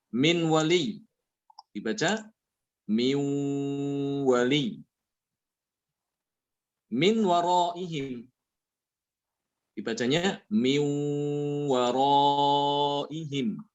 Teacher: Nunnya dimasukkan ke wawu. Ya, wawunya disertai dengan gunnah. Inilah namanya idgham bi gunnah ya.